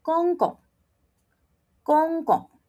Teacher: Remember, the G becomes K. So, when you pronounce it, don't blow